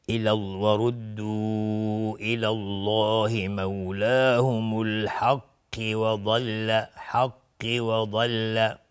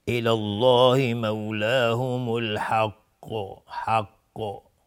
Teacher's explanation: قاف اینجا قلقله میخواد چون ساکنش کردیم و قاف از حروف استعلاست، باید غلیظ تلفظ بشه